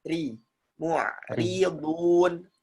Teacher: Ri-nya jadi tipis ya. Ketika ro kasrah ya tipis ya.